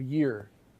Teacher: These are either even further behind the alveolar ridge, sort of back where the roof of your mouth gets as high as it's going to get. And the one palatal sound that we have in English is the Y sound at the beginning of year